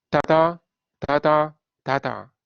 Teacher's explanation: 약한 음절이 강한 음절에 이어지는 것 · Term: 약강 음보